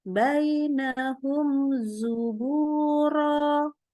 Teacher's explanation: Mim kita baca jelas, nggak pakai tambah gunnah ya. Ingat, tapi mimnya sendiri ada sifat tawasud. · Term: idhar syafawi